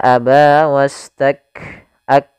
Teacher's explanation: di sini ada sifat huruf Kaf memiliki sifat yaitu syiddah dan hamsnya syiddahnya harus tampakkan dulu baru hamsnya tidak bisa bersamaan · Syiddahnya harus tampakkan dulu baru hamznya, tidak bisa bersamaan. Maka aba wastak ak, mat itu apa namanya, syiddahnya dulu, tertahannya suara baru nafas, ya. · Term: syiddah dan hamznya